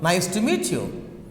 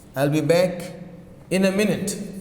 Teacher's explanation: So, falling intonation. The pitch of your voice falls at the end of sentence. That means your voice is coming down.